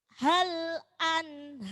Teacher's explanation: tebal karena itu sebelumnya fathah. Jadi huruf roknya rok tafhim.